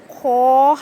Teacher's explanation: हलक के ऊपर वाले हिस्से से खदा होता है · حلق کے اوپر والے حصے سے خا ادا ہوتا ہے